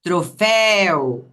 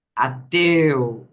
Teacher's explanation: uma aberta e outra fechada a vogal aberta e a fechada · Troféu, aqui temos som aberto. Ateu, aqui temos som fechado.